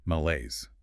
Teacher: Two syllables. Stress on the second.